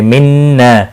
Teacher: नून मुशद्दद पर गुन्ना होगा। ना अलिफ मद्दा भी है, एक अलिफ के बराबर खींच कर भी पढ़ेंगे।